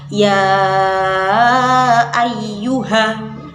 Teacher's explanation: bacaan panjang 4 harokat yang disebut dengan mad jaiz munfasil, yaitu pada kata ya ayyuha.